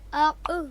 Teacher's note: حرف قاف پر جزم ہے، لہٰذا اس کو ہم کیسے پڑھیں گے؟ قلقلہ کے ساتھ، یعنی جنبش کے ساتھ